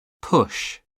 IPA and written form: pʊʃ (push)